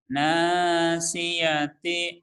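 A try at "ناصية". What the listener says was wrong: Itu kayaknya ngengkreng ke hidung. Nasihati, mana enak Mas. Coba diginin. Nasihati, nasihati. Nasihati. Biar ada ininya ya, biar ada tenaganya suaranya.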